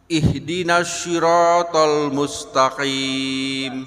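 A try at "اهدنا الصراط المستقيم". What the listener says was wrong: Sekarang tinggal huruf shad.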